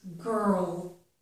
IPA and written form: ˈɡɜɹl (girl)